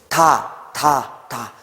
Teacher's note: 혀끝이 앞니빨 뒤에 붙겠죠? 그리고 요 혀가 밑으로 내려오면서 소리가 납니다. 그러니까 여기서 먼저 막히는 거죠. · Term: 파열음